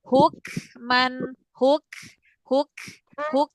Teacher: ketika kafnya sukun nafasnya dialirin ke depan